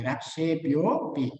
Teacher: ઓ વર્ણના પાછળનો જે અ વર્ણ જેમાં ભળી ગયો છે તેથી જ્યારે ઓ વર્ણનું આપણે ઉચ્ચારણ કરવાનું થાય ત્યારે આપણે ઓ વર્ણ ઉપર થોડોક ભાર આપવાનો છે